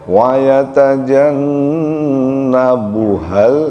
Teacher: jangan lupa nunnya gunnah ya, tahan sedikit.